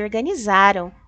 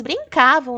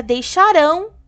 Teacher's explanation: passado e as palavras são paroxítonas o que que são paroxítonas a sílaba tônica é a penúltima